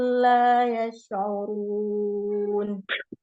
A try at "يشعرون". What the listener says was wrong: يشعرون، حاول أن تأتي بصفة التفشي في الشين. يشعرون.